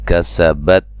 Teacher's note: کسبت تا کو ہلانا نہیں ہے. سین کو باریک سیٹی سے ادا کرنا ہے